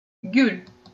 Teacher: слово гюль мы тоже «л» говорим мягко, как будто с мягким знаком